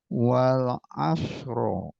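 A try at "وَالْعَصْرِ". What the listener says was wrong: jangan di fathah tapi di sukun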